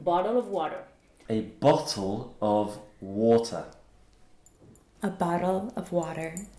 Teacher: Et cette différence, elle réside donc dans la façon dont les Américains vont prononcer le T ou le double T à l'intérieur des mots, qui ne va pas se prononcer comme un T, mais comme un D. Donc, bottle of water donne bottle of water.